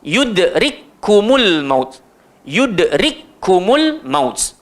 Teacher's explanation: So dalam tulisan adalah 2 kaf, tapi bila kita baca seolah-olah cuma ada 1 kaf. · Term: idgham mislain